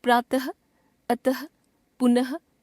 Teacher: इसका उच्चारण केवल संस्कृत से आए कुछ तत्सम शब्दों में किया जाता है और उच्चारण ह की तरह होता है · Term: विसर्ग